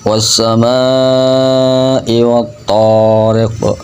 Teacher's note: Was-sama'ah, di situ mim fathah mahnya dibaca panjang 4 atau 5 harokat ukuran panjangnya dan disambung ke hamzah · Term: mad wajib mutasil